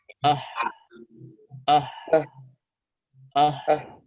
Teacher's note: jadi jelas sekali bahwa makhraj huruf H di bagian pita suara